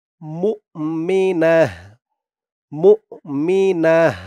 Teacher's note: ইদগামে বাগুন্নাহ গুন্না হবে কারণ তানবিনের পরে ইদগামে বাগুনার হরফ মিম আসছে